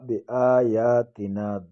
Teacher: دونوں کڑا زبر آپ کو نظر آ رہا ہے، دونوں کو ایک ایک الف کی مقدار کھینچیں گے. بآیاتنا تنا الف خالی آگے زبر ہے، الف مدہ کہتے ہیں اس کو، ایک الف کی مقدار اس کو بھی کھینچیں گے.